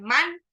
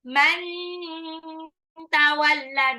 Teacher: nun sukun ketemu tak disamarkan, bukan man tapi man tawalla, nunnya hampir mau lompat ke tak